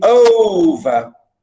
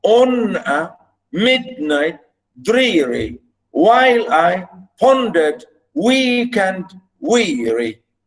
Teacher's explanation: stress at the beginning and then go down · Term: trochaic